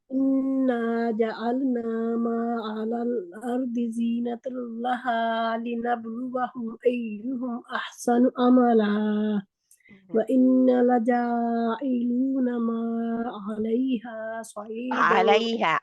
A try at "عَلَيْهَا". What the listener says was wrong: علیہ موٹا نہیں ہے، علیہ نہیں ہے.